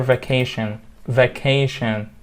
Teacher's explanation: three syllables with the stress on the second one